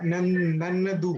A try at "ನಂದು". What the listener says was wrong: So Nannadu is it's a written language. So when you are saying it, Nandu, you'll say. Nandu.